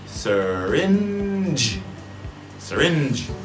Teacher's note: Now this is I'm not going to go into it today, but these G's and these J's, there's always that, not always, a lot of words, there's that D sound before, so it's just like I said with those plosives, the T's, K's, P's. If you add a D position, hold the air, D, but you take the D and switch it to your Z, then you'll have J.